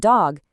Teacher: Your tongue tip presses against that bumpy ridge right behind your top teeth.